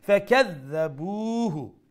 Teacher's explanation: Dal has a shadda double sound and pronounce the dal with the softer tone.